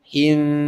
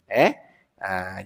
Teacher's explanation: Him tu kena dengung. Sebab dah standby nak masuk huruf ba.